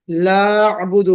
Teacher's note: مثال کے طور پر آپ نے الکافرون میں لا اعبدو، کافرون میں را پر آپ سے بھی نہیں ہوا، اور لا اعبدو جو ہے وہ لا اعبدو ہو گیا، یعنی لام الف کو آپ نے دوسرے حمزے میں مرج کر دیا